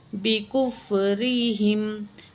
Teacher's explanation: را کے نیچے زیر ہے، را کو باریک پڑھیں گے، جب زبر یا پیش ہو تو را کو موٹا پڑھا جاتا ہے۔